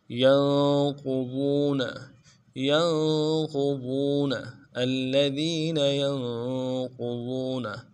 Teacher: ین میں نون ساکن ہے غنہ کریں گے، قاف کو موٹا کریں گے ، پیش جو قاف کے اوپر پیش اس کو نرم سے